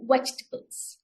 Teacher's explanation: you need to bite your bottom lips with your top teeth and add little voice to it.